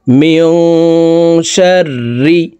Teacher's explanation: মিম নুন জির মিয়ং, ইকফাহ গুন্না। নুন সাকিনের পর ইকফার হরফ শিন আসছে, এই কারণে এই নুন সাকিনকে নাকের ভিতরে লুকাইয়া গুন্নার সহিত পড়তে হবে। মিয়ং, শিন র জবর শার, র জির রি।